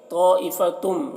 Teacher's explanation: طائفتم، یہاں پر دیکھیے تنوین کے بعد حروف یومن میں سے من ہے تو تنوین کو میم سے ملا کر غنہ کے ساتھ پڑھیں گے، اس کو ادغام ناقص کہتے ہیں۔